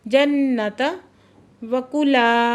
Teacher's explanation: अलिफ से पहले ज़बर है तो अली मद्दा 2 हरकत खींच के पढ़ रहे हैं।